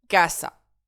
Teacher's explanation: Mon mot se termine par une voyelle. Donc, j'accentue mon avant-dernière syllabe.